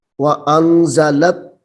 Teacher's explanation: وَأَنزَلَ التَّوْرَاةَ، واو زبر وا، حمزہ نون زبر ان، زا زبر زا، لام تا زبر لت، لام کو تا مشدد کے ساتھ ملائیں گے